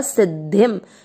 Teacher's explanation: सी के बाद में जो लिखा हुआ उसमें द आधा है और ध से धनुष पूरा है तो सी के साथ आधा द पढ़ेंगे सिद्ध और ध से धनुष जो पूरा है उस पे ई की मात्रा लगा देंगे धी, सिद्धि। शब्द पूरा होने के बाद अनुस्वार आधा म सिद्धिम। पहला चरण फिर से कांक्षन्तः कर्मणाम सिद्धिम।